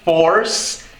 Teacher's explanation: temos o som do R retroflexo como em force